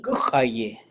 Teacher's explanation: It's all short, and it goes high, low, low.